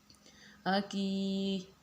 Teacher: چھوٹا کاف ہے تو اس کو ہم سمپل طریقے سے پڑھیں گے، یعنی اس کو ہم نے حلق سے نہیں پڑھنا